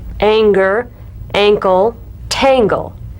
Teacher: practice the medial Ng followed by a g or k drum beat